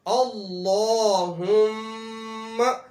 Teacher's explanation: لفظ اللہ کو موٹا بھی کرنا ہے اور میم کے اوپر غنہ بھی کرنا ہے